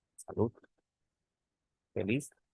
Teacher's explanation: que aquí las agudas está tomando en cuenta solamente la terminación El golpe de voz en la última sílaba